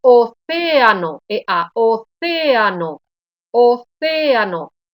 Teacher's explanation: la pronunciación es la misma intensidad de las dos vocales · dos vocales abiertas, dos vocales fuertes que no se unen, no se agrupan. Son fuertes, tienen autonomía, se separan en dos sílabas diferentes. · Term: hiato